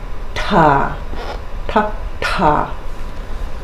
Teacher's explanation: we've got our aspirated voiceless retroflex consonant T pull the belly into aspirate it makes it easier t t